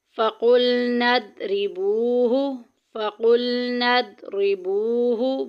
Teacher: واو ساکن پیچھے پیش، واو مدہ کا قاعدہ جاری ہو رہا ہے، ایک الف کے برابر لمبا کریں گے